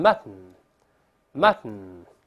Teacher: mutton读快了之后是鼻腔爆破